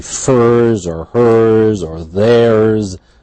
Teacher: So always after a retroflex, if it would be furs or hers or theirs, always a z.